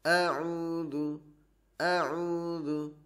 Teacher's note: Huruf hamzah memiliki sifat syiddah atau penekanan, atau bisa dibilang tertahannya aliran suara.